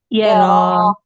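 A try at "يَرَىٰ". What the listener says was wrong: ரா heavy.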